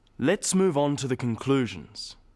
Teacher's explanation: stressing 'conclusions' because it's the key word in this sentence